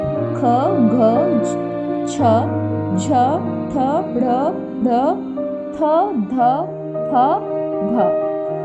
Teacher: इनके उच्चारण में फेफड़ों से बाहर निकलने वाली वायु की मात्रा अपेक्षाकृत अधिक होती है, अर्थात अल्प प्राण की तुलना में महाप्राण के जो शब्द हैं इनके उच्चारण में वायु की मात्रा अधिक होती है, जैसे ख, घ, छ, झ, ठ, ढ़, ढ, थ, ध, फ, भ।